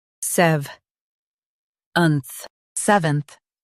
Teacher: Stress SEV and keep unth light.